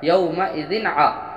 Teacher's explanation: دو زیر کی تنوین کے بعد حروف حلقی کے 6 حرف میں سے عین آیا، یہاں ہم ظاہر کر کے بغیر غنہ کے جلد ادا کریں گے۔ یہاں اظہار حلقی ہو رہا ہے یومئذ ع، اور یہاں لئی میں یائلین ہو رہا ہے، نرم آواز سے جلد ادا کریں گے۔